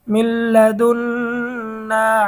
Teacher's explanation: এখানে হরকতের বামে নুনে তাসদীদ হয়েছে, ওয়াজিব গুন্না করতে হবে।